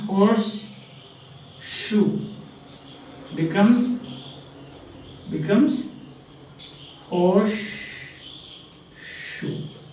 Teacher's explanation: S changes to sh under the influence of neighboring sound, that is sh. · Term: assimilation